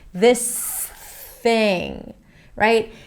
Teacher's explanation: make sure you bring the tongue in for the S and then you push it out for the TH.